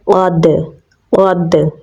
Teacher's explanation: دال کے ساتھ ملائیں گے کیونکہ دال کے اوپر جزم ہے، دال حروف قلقلہ میں سے ہے تو اس پہ ہم قلقلہ کریں گے